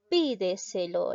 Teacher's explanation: La mayor fuerza de voz recae en la antepenúltima sílaba, por lo tanto es sobre esdrújula.